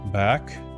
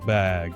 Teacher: Then you release it. K is just air. G is the same movement with your voice on. · Same mouth position, and the only difference is your voice. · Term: final sounds